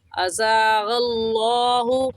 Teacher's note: لفظ اللہ سے پہلے زبر آ گیا، لفظ اللہ کو موٹا کریں گے، اور موٹا کرنے کا طریقہ کہ آپ کے دونوں ہونٹ گول ہو جائے